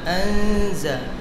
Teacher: গুন্না পাতলা হবে নুন সাকিনের পরে ইস্তিফালের হরফ আসে